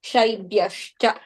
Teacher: The visarga will be replaced with a half sa. That is halant sa.